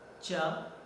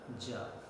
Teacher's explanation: Chaw is voiceless and jaw is voiced.